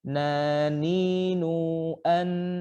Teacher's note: huruf nun terletak di ujung lidah bertemu dengan gusi dari dua gigi seri atas dengan kata lain adalah langit-langit dan bukan gigi gusi atau dengan